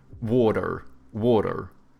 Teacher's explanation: Americans, they have like soft T's and then they pronounce their R's